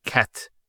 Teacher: So the T doesn't have any vowel associated with it. It's actually just a stop on the T. So in this case, we would actually put a sukun there cat.